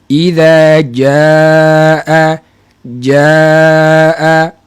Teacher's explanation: kita nak sebut huruf Jim daripada Tengah lidah kerana makhraj huruf Jim adalah tengah lidah dengan langit yang bersententang